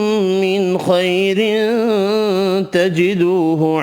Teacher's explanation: دو زیر کی وجہ سے تنوین کا اخفا ہوگا